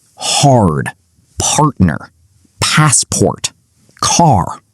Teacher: pronounced every single post-vowel R